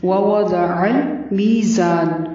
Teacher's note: ووضع واو پر منہ کو گول کرنا ہے، ضاد کو پر پڑھنا ہے، عین کو حلق سے ادا کرنا ہے اور لام کو ہلانا نہیں ہے. · میزان میں میم یا زیر می مد اصلی ہے، تھوڑا سا لمبا کرنا ہے. زا کی آواز میں سیٹی والی آواز ہوگی، تھوڑی سی شدت ہوگی.